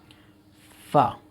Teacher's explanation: اوپر کے دانتوں کا سرا نیچے والا، نیچے کے ہونٹ سے مل کر فا ادا ہوتا ہے